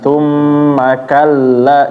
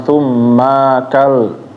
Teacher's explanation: Coba perhatikan, thum langsung ke ka. Thum begitu mengucapin ma pendek aja, pindah ke ka langsung. Maka, thum makalla, jangan ditahan, jangan thum makal.